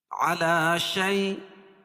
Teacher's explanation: یا ساکن سے پہلے زبر ہو تو یالین ہوتا ہے، اس کو نرم آواز کے ساتھ جلدی ادا کریں گے